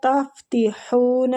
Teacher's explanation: یہ ہا جو ہے یہ وسط الحلق سے نکلے گا